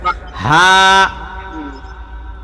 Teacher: হা এর মধ্যে এক আলিফ পরিমাণ টান আছে